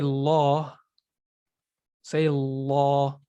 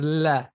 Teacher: If you say law, say law, and feel how the back of your tongue rose up versus la